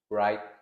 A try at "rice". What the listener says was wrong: No, not right. Rice. Rice, not right. R-I-C-E nhé, có CE là phải có S. Rice.